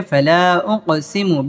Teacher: কফটা কলকলার হরফ এখানে ধাক্কা দিয়ে পড়তে হবে